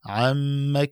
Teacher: عم کې میم مشدده دی، قانون په میم مشدده کې دا دی چې په دې کې غنه واجب ده، یعنی په مقدار د یو الف بدل ته وقت تیرې. عم احتیاط دا پکار دی، اکثر د زبر د کسان نه ولاړ شي به الف پیدا کېږي عما کې، نو دا به خطایی ده.